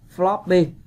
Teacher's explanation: Floppy có nghĩa là các bạn nhấn phần 1. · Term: dấu nhấn